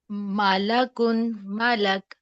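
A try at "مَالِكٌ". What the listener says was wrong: اتنا بڑا منہ نہیں کھولنا، زبر کے لیے ہم نے بولا تھا نا مالا کن نہیں، ملا کن، کم منہ کھولیں، جتنا کھلتا ہے بس اتنا،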